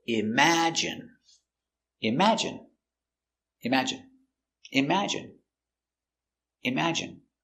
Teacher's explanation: Imagine. Stress on the second syllable.